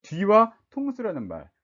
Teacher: 통수라는 말 자체가 거센소리를 시작하잖아요